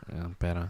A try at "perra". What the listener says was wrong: pera has two R's. Perra.